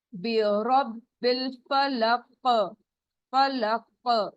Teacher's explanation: فا لام زبر ہے، ایک کاؤنٹ اسٹریچ. قاف رک رہے ہیں تو رکتے وقت ساکن ہو جاتا ہے اور اس پہ قلقلہ ہوگا